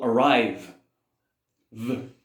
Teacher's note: You can feel the vibration. Then you add the D sound at the end.